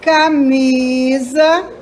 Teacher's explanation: O mi é mais forte.